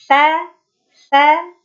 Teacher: Sifat istifal pangkal lidahnya terhampar sehingga menyebabkan huruf sa ini tipis. Karakternya sa, dan infitah ya, terbukanya aula tengah lidah.